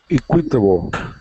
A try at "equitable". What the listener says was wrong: Equitable. The emphasis is on the E. Equitable.